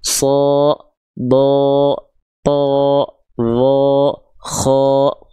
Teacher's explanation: Kalau keluar pakai vokal A ya gitu, Bang. Emang kalau huruf tebal ketika berharakat fathah bunyi vokalnya apa? Bunyi vokalnya condong ke O. Kalau huruf tebal sho, Do, tho, Do, kho.